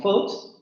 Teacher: una palabra como foot, que la vamos a pronunciar con la vocal corta, la vocal central posterior media cerrada labializada